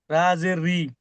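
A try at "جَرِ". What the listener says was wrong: রা নয়, জাজের জি, জাজের জি, জাজের জি। জাজি।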